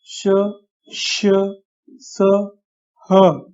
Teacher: जब हम इनका उच्चार करते हैं तब मुंह से हवा तेजी से या जोर से बाहर की तरफ निकलती है